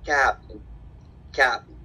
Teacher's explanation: utiliza la B glotal al final de las palabras